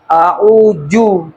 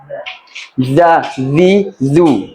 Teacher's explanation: Ujung lidah ketemu ujung gigi atas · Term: huruf dza, huruf zal